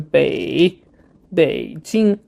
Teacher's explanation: this one is third turnone which is a bit you know you need to reduce your pitch quite low and you know do like a u shaped sound